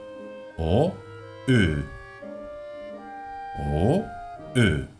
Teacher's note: Y después tenemos otra vocal con umlaut, la O umlaut. Esta se pronuncia poniendo la boca como una O, y sin mover los labios, pronunciamos por dentro una E.